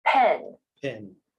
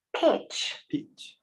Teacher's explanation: Are you feeling that puff of air on your hand as you pronounce the words that start with P?